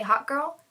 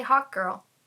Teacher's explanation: Those glottal stop consonants, it sounds like I'm saying Hot Girl.